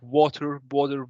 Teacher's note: they make the letter t as a mild d